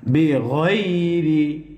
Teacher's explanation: জবরের পরে ইয়া সাকিন লিনের হরফ। লিনের হরফ হইলে তাড়াতাড়ি পড়তে হয়।